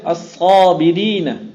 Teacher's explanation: لام کا ادغام کیا صاد میں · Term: لام تعریف کا ادغام